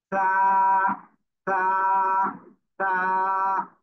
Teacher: এবার আমরা এই অক্ষরটা করবো। জিহ্বার আগা এই সামনের উপরে দুই দাঁতের আগার সাথে লাগবে, লাগিয়ে উচ্চারণ করবো।